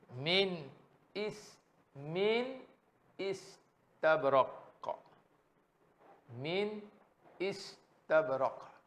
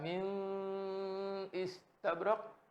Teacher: apabila nun mati berjumpa dengan huruf izhar, itu hamzah, maka bacaannya tak boleh dengung, kena jelaskan.